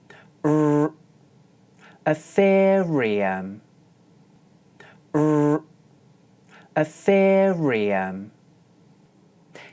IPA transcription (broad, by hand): r